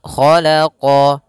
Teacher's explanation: huruf Kho pangkal lidah kita terangkat khalaqo sama qo juga huruf istila pangkal lidah terangkat pada lafal